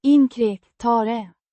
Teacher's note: Pronounced Inkräktare. with the stress on the second syllable